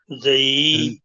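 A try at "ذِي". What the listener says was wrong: نہیں، آپ دانتوں کے درمیان اپنی زبان رکھیں.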